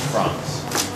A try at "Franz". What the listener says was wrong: It's like the Fonz, but with the R. the Fonz With the R.